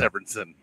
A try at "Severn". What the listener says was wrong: No, just Severn. You're trying to Severn. Give him an extra syllable because of that mustache.